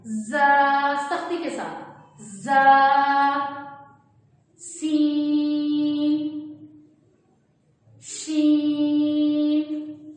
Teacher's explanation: 3 ایسے حروف ہیں جن میں سیٹی کی ساؤنڈ آتی ہے، دونوں دانتوں کو جوڑ کر ہم لفظ زا ادا کریں گے، زا، سختی کے ساتھ، زا، سین، شین۔